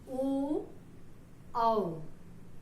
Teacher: हमारा श्वास जो है वो गले से आ रहा है और होठ का भी हमारे इसमें स्पर्श हो रहा है, जैसे ओ, औ, तो ये हमारा कंठोष्ठ हो गया।